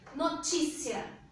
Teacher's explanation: essa é uma palavra paroxítona, ou seja, a sílaba mais forte é a penúltima.